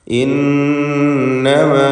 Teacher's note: ഇന്നമ നൂൻ മുഷദ്ദദയെ മണിക്കുക